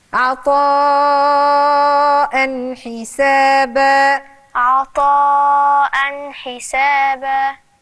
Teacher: عطاء نفس المد، حرف المد والهمزة جاي وراها في نفس الكلمة، أربع حركات.